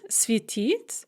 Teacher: the infinitive is светить with the stress on the ending.